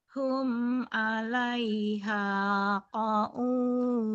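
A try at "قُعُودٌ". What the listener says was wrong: Qu'ud. Bukan qa'ud. Qu'ud. Tadi juga yang baca qa'ud juga sama. Qu'ud.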